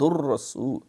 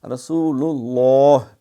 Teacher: رسول سین کی سیٹی ہو